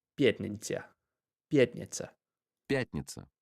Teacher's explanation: the TN sound in Russian, if we look at where it says пятница, it almost has like a ny sound to it, kind of like Kanye or Niño.